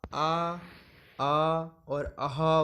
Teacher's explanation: कंठ से उच्चारित होने वाले मतलब जिन स्वरों को अपन पीछे से बोलते हैं, कंठ से अपनी सीधे कंठ से आवाज़ निकलती है, तो जब आप आ और आहा बोलेंगे तो अपनी ध्वनि कंठ से निकलेगी।